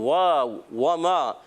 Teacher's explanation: واو کی ادائیگی ہوتی ہے ہونٹوں کی گولائی سے. واو, وما, میم الف زر ما.